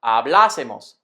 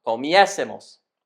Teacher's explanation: We still need to accent the syllable just before the S in the nosotros form, so hablar becomes hablásemos, and comer becomes comiésemos.